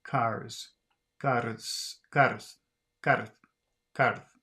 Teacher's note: it's more like a Double R but the vocal chords do not vibrate during it the effect is almost like combining r with s except that · Double R but the vocal chords do not vibrate during it the effect is almost like combining r with s except that the tongue's tip remains at the end this sound